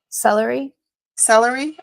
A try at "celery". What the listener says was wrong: You have a three syllables. I have two.